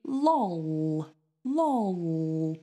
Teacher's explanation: On its own, if we put that word on its own, it would be a dark L. Because L is the last sound. And that's one of the rules of a dark L.